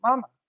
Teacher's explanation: we call it a neutral tone it sounds quickly and lightly